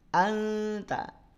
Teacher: Sumber suara sudah mulai dimunculkan di ujung lidah, bertemu dengan pangkal gigi seri atas.